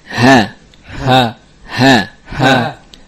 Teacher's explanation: Ha keluar dari aqsa al-halq.